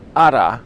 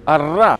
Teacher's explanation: the tap, ara, or the apical roll